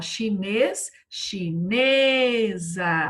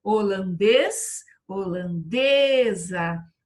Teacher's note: Mas olha a chinesa, a sílaba tônica deslocou. Então, ó, chinês, chinesa, virou paroxítona. Paroxítona terminada em A, não tem acento.